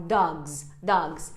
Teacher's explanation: Talvez você nunca tenha percebido isso, mas o som final é um Z mesmo.